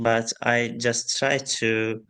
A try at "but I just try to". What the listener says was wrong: And again, pronunciation is a bit staccato. Just notice the rhythm of the speech here. Just listen to it again. But I just try to, it's just a bit mechanical.